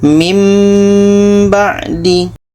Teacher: Jadi itulah pembahasan tentang cara mudah paham iqlab yang kesimpulannya adalah bunyi tanwin ini kita tukar kepada bunyi mim. Bunyi nun mati ini kita tukar kepada bunyi mim ketika bertemu dengan huruf ba dan di sini ada dengung.